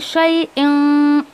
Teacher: ऐसा खींचना नहीं इसको, कुल्ली शई इं, अब ये शई इं ये जो मैं गुन्ना कर रही हूँ ना ये इख्फा का गुन्ना किया मैंने